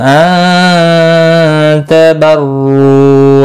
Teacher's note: नून साकिन के बाद हुरूफ इख्फा का ता इख्फा हकीकी होगा, गुन्ना के साथ पढ़ेंगे। बर्रू रौ पेश की वजह से पुर पढ़ा जाएगा।